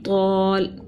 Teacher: تو الف زبر تو، لام زبر لا، طول آگے وقف طول، ٹھیک ہے، الف مدہ ایک الف کے برابر کھینچا، زبر ہے نرمی سے پڑھا اور وقف بالاسکان کیا